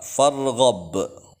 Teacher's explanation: ba di akhir kalimah yang diwaqafkan qalqalah kubro dipantulkan besar